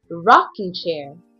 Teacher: this one is a single treated as a noun for example primary stress is on the first word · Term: first word stress